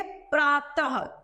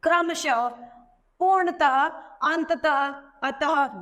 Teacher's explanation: विसर्ग की मात्रा को हम व्यंजनों के पीछे लगाते हैं जिसके उच्चारण को हम ह की ध्वनि निकलती है